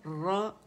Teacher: را جب آپ کہتے ہیں تو پھر موٹا تھک کرنا ہے کیونکہ مشدد را پہ زبر ہے